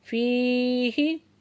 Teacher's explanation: फ़ीही या साकिन से पहले ज़ेर है तो या मद्दा है, 2 हरकत खींच के पढ़ेंगे